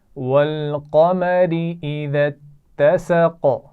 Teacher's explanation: والقمر قاف موٹا ہے لیکن را باریک پڑھی جائے گی کیونکہ اس کے نیچے زیر ہے